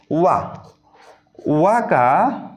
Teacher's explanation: वा वर्ण का उच्चारण स्थान दंतोष्ठ होगा